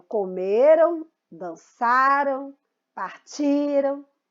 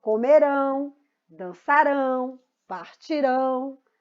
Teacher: Já os verbos na terceira pessoa do plural que indicam tempo futuro terminam em ão e são oxítono, porque é a última sílaba mais forte